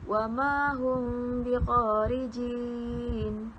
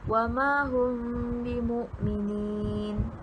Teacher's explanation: cara bacaan ikhfa syafawi adalah dengan meringankan bibir semasa menyebut mim sukun dengan tidak merapatkan bibir sepenuhnya